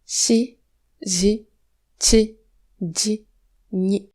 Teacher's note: Alvéolo-palatal, ça veut dire que la partie avant de la langue touche un peu le palais, contrairement à ce qui se passe pour les sons S, z, c, d, n.